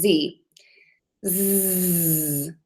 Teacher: let's make that sound a z z you feel that movement you feel your throat vibrating right there that means that your vocal cords are banging together and that is called voicing